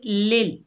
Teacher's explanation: लाम के नीचे ज़ेर है, आगे अल्लाह का लाम है। अल्लाह का लाम ज़ेर की वजह से बारीक पढ़ा जाएगा